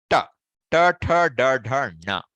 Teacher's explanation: If your tongue goes up and you add a nose, you will get na.